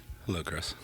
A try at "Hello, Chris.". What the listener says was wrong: That was too low.